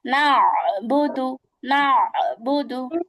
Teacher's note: একদম কণ্ঠের মাঝখান, কণ্ঠটাকে কিন্তু চাপাইতে হবে। না চাপাইলে কিন্তু এই মাত্রাটা আসবে না, হ্যাঁ। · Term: আইন